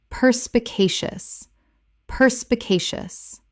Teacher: Five syllables with the stress on the third.